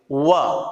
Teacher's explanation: वकारस्य दंतोष्टम, ये सूत्र ये कहता है कि केवल व, वकार का मतलब है केवल व, एक ऐसा वर्ण है जिसका उच्चारण स्थान है दंत और ओष्ठ। क्योंकि जब हम व को बोलते हैं तो जो हमारे होठ है वो दांतों के ऊपर जो है वो कवर करते हुए व ऐसे उच्चारण निकलता है। वकारस्य दंतोष्टम, दंतोष्टम दांत और ओष्ठ दो मिलकर के।